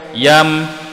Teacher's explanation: Di sini namanya izhar syafawi, izhar syafawi, kena sebut dengan jelas sebutan huruf mim bertanda sakinah.